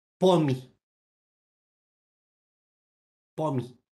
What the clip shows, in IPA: pomʲ